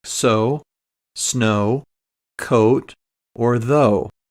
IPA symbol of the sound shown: oʊ